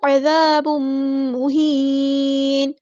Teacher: تنوین کے بعد میم ہے، ادغام مع الغنہ ہو رہا ہے